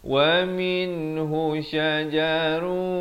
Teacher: Di sini izhar halqi. Min yang ada nun mati, yang ada tanda mati asli, itu jelaskan saja, jangan dipanjangkan